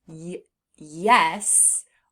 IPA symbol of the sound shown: y